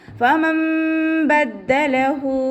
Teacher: നൂനിൻ്റെ sound അവിടെ കേൾക്കുകയില്ല. മീമിൻ്റെ sound ആക്കിയിട്ട് മാറ്റിമറിക്കുക. ഉന്ന കൊടുക്കുകയും ചെയ്യുക കേട്ടോ. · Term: ഇഖ്ലാബിൻ്റെ